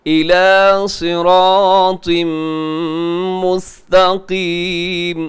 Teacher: إِلَى صِرَاطٍ مُسْتَقِيمٍ، صراط پہ تنوین ہے، تنوین کے بعد میم ہے تو یہاں بھی ہوگا جی ادغام غنے کے ساتھ